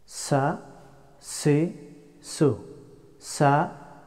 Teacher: the letter of seen pronounced from tip of the tongue and in between upper and lower front two teeth